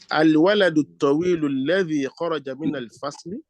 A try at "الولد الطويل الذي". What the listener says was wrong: So it's not right to just say ladhi. No. You say al-waladu tawilu alladhi.